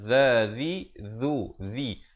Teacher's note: Ayyuhallazi, zi di hujung lidah.